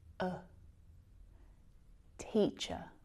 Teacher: this is our relaxed lazy schah sound we really need to relax our jaw